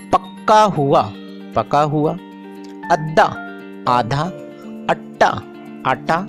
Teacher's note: इस बोली में सादा मुसम्मतों को मुशद्दद करने का आम रुझान पाया जाता है